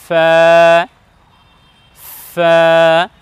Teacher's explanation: সামনের উপরে সম্মুখ ভাগের দুই দাঁত এবং নিচের ঠোঁটের ভেজা অংশ থেকে লাগিয়ে উচ্চারণ করতে হবে